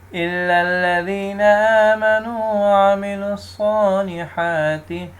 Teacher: اب صاد کی ساؤنڈ بھی آنی چاہیے سٹی کی، اور صاد کو موٹا بھی پڑھنا ہے